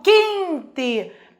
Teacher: percebam que esse QU só tem um som. O U não tem som, na verdade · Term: dígrafo consonantal